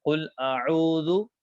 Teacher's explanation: یہ جو عین ہم نکال رہے ہیں گلے کے درمیانی حصے سے ادا کر رہے ہیں